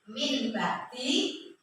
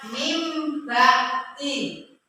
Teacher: Apabila ada nun sukun atau tanwin bertemu dengan huruf ba, maka dibaca dengan iqlab. Hukum bacanya iqlab, yaitu diganti dengan huruf mim. Contohnya min bakti dibaca mim bakti, ya.